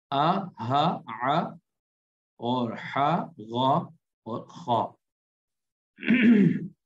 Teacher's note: یہ حلق سے ادا ہوتے ہیں 6 حرف، آ، ہا، ع اور حا، غا اور خا۔